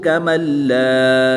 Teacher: یہاں پر ادغام مع الغنہ نہیں بلکہ ادغام بلا غنہ کر کے پڑھیں گے، بغیر غنہ کے پڑھیں گے